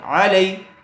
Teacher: یا ساکن سے پہلے زبر والا حرف آیا ہوا ہے، اس لیے لین کا قاعدہ ہوگا، اس کو جلدی اور نرم آواز سے ادا کریں گے